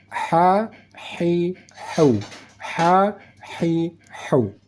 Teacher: untuk dimengerti yang penting untuk memahami pertama cara membaca huruf ha ha yang di tengah kerongkongan ada bunyi desis angin yang ha yang halus